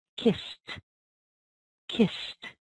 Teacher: this ED is also unvoiced. It sounds like T, T, sounds like a T. So our past tense word is kissed, kissed.